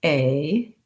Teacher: So in American English, a is 2 sounds. I move from the tense central a to the more lax and higher I sound. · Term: tense a diphthong